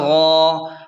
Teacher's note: غین کو خوب موٹا کر کے کھینچیں